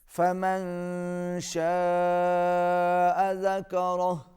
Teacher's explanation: شاء، بڑی مد ہے، کھینچ کے پڑھیں گے